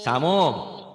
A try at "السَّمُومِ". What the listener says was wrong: jangan samum. Kalau samum ada tasdid.